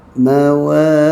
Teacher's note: Mawaqi, qaf jaga je, qaf yang baris bawah ni walaupun dia bersifat dengan tebal, tapi kena kurangkan tebal, tapi jangan nipis ya.